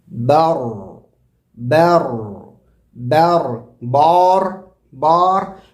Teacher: بر برو، رو بھی نہیں بولیں گے کہ آپ اللہ اکبر برو. ہونٹ گول کر دینے سے ایکسٹرا واو کی آواز یا پیش کی آواز پیدا ہو جا رہی ہے